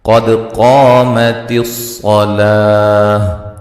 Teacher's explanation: اس کے بعد لام کو لمبا کریں گے ایک الف کی مقدار کے برابر، اور وقفاً تا کو ہائی ساکنہ میں تبدیل کر دیں گے · یہاں قاف کو موٹا ادا کریں گے، دال کو ہلا کے پڑھیں گے، قاف کو موٹا ادا کریں گے، الف مدہ ہے، صاد کو موٹا ادا کریں گے، ٹھیک ہے جی۔